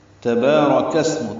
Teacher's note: یہ اسم کا حمزہ عارضی ہوتا ہے، اس لیے کاف سین سے ملایا گیا ہے. سین ساکن پہ ہمس ہے، یعنی اس میں سانس جاری رہتی ہے